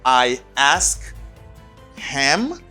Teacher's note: You don't pronounce H. You say, I ask him.